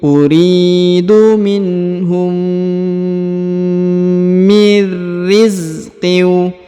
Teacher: Huruf mim berharokat sukun bertemu dengan mim atau mim bertemu mim, maka ditahan dan ditekan, didengungkan 2 harokat.